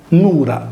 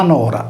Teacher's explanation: Con l'apertura della vocale U in O, Nura è diventata la Nora dei nostri giorni.